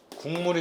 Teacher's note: 기억이 미음을 만나서 이응으로 바뀌었습니다. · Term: 비음화